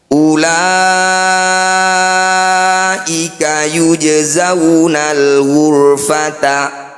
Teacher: Bunyi ro kita kurangi getarannya. Angkat ujung lidah sampai menempel di langit-langit lisan. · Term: ro tafkhim